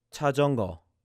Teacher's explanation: the very first symbol sounds more like a CH, but the next one sounds like a J sound